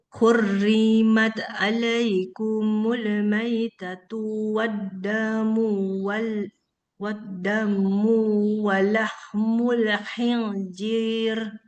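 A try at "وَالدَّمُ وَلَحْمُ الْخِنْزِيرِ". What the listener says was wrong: Oke, waddamu walahmun. Jangan waddamu. Kalau kita bacanya waddamu, udah dua harkat dia. Sementara di sini dia nggak panjang. Waddamu walahmun. Kerasa nggak Mbak Dini bedanya?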